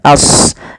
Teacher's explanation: sadnya tebalkan as, jangan ashabu, jangan sin, tapi dia huruf sad sesuai dengan makhraj dan sifatnya.